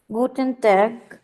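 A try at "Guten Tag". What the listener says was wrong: গুটেন টাগ বলবো এটাকে আমরা, কারণ এটাকে আমরা জার্মানে এটাকে কি বলি? বলি, ওই জন্য বলবো গুটেন টাগ। এটাকে একদম টা, মানে ট উচ্চারণ না করে অনেকটা ট আর ত এর মতো উচ্চারণ, গুটেন টাগ। গুটেন টাগ বলবো, আবার বলেন।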